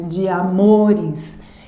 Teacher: Eu tenho aqui uma sílaba átona e a próxima tônica. A próxima tônica iniciada em uma vogal, então elas se unem. Uma sílaba poética, de amores.